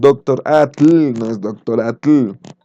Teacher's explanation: es el equivalente a poner su punta de la lengua detrás de los dientes incisivos y expulsar el aire por los costados de la lengua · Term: La partícula TL